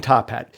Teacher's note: The tip of the tongue pops off the alveolar ridge - that's the part of your gums right behind the front of your teeth as a puff of air leaves your mouth. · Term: voiceless stop